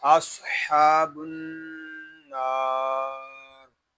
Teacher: یہاں صاد کو ہم پر پڑھیں گے کیونکہ صاد حروف متعالیہ میں سے ہے، ہا کو ایک الف تک کھینچ کر پڑھیں گے کیونکہ یہاں ہا کے کھڑا زبر ہے۔ · نون مشدد میں غنہ ہوگا اور نون کو ایک الف تک کھینچ کر بھی پڑھیں گے کیونکہ یہاں الف مدہ ہو رہا ہے، اور وقف میں یہاں ہوگا مد عارض راپ اور وقف جائز۔